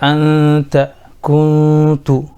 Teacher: اس میں نون کو چھپا کر کے پڑھا گیا، یعنی اخفا کر کے پڑھا گیا، چونکہ وہاں پہ نون ساکن اور تنوین کے بعد اخفا کا قاعدہ پایا جا رہا ہے.